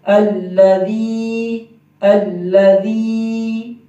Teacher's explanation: یہ یا مدہ ہے، یا ساکن ہو، یا ساکن کا مطلب یہ ہے کہ یا بنی ہوئی ہو ایسے اور اس کے اوپر دال کی شکل ہو، جزم کی شکل ہو، تو اس کو یا ساکن کہتے ہیں۔ اس سے پہلے جب زیر آ جائے گی تو اس کو یا مدہ کہتے ہیں، اور اس کو ایک الف کی مقدار لمبا کریں گے